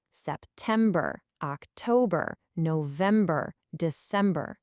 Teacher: It's a weak, strong, weak syllable pattern that can really help you nail the pronunciation.